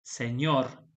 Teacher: si nos fijamos, la sílaba tónica es la última, pero en este caso no va a llevar tilde porque la palabra está terminando en R.